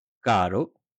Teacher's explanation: Una sola r entre vocales suena suave, caro. Al inicio de palabra o después de l, n o s, suena fuerte.